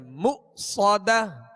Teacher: یہاں حمزہ ساکن ہے, اس کو جھٹکے سے ادا کریں گے مؤصدہ. صاد کو سیٹی کی آواز میں اور پر پڑھیں گے